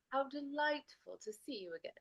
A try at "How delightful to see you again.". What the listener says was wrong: Can I get a little more of a pure ooh on two? And sometimes you'll hear again instead.